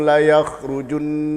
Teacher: Junnya itu di hidung karena makhrajnya adalah khayshum.